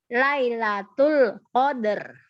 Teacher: R-nya nggak boleh tipis karena dia sukun, huruf sebelumnya sukun, huruf sebelumnya fathah, jadi tebal.